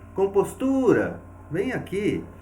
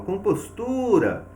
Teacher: quando eu falo compostura, eu vou perceber que o tu recebeu uma intensidade maior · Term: sílaba tônica